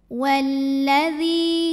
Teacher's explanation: Lam yang sukun tidak dibaca. Jadi kita langsung baca ke lam yang berikutnya. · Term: alif lam syamsiyah